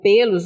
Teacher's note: quando eu digo pelos, o o som ele é fechado